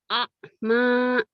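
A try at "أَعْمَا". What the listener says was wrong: Nah, jangan akma ya. Orang Jawa ain matinya ke ka umumnya.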